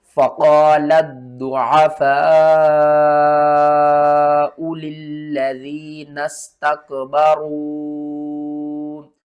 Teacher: اس لام کو ہم نے ضاد کے ساتھ ملانا ہے. اس کو 2 بار پڑھیں گے، سختی کے ساتھ پڑھیں گے